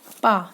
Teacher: पा जब आप बोलेंगे ना तो दोनों ओठ आपके कार्य करेंगे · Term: ओष्ठ